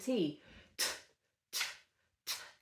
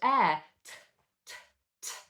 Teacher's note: First key difference is that the T is made with an explosion of air.